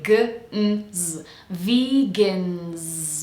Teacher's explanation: And then we have vegan, so make sure we're doing the vibrating v sound, followed by E, V, and then the second syllable is a soft one, so we have schwa, gens. Almost sounds like there's no vowel at all, so we say g, n, z, vegans.